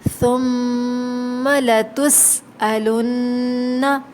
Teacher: سین میں سیٹی کی آواز آئے گی، ٹھیک ہے۔ الن، نون مشدد پہ غنہ ہوگا۔